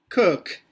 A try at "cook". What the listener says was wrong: não tem esse sonzinho de U, né? É cook.